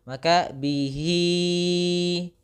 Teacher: Bihi, jangan dimasukkan ke rongga hidung